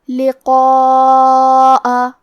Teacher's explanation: مد واجب متصل کا معنی ہے کہ حرف المد اور اس کی وجہ جو کہ حمزہ ہے دونوں ایک ہی کلمہ میں ہوں۔ اس مد میں ہم اپنی آواز 4 مد کے برابر لمبی کریں گے · ہمیں قاف کو اور مد الف کو دونوں کو تفخیم سے مطلب بھاری آواز میں پڑھنا ہے، اور یہ مد واجب متصل ہے۔